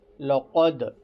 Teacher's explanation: دال میں تھوڑی سی آواز ہلیں گی، اس میں قلقلہ ہوگا